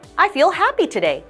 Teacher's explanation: I feel happy today in which your intonation will go up